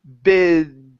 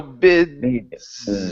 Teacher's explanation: And so you're slowly closing your mouth because your tongue has to go to the top of your mouth for the D, and then your voice, your vocal cords need to vibrate, and then you move into the Z sound, the voiced S there at the end